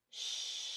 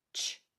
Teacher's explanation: sh is a sustained sound sh CH is a fast sound